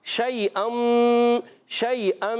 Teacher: یا ساکن سے پہلے زبر آگے، یالین ہے، نرمی سے ادا کریں گے